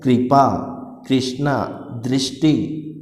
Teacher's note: री का साउंड आ रहा है तो तीनों में क्या हो रहा है, री का उच्चारण हो रहा है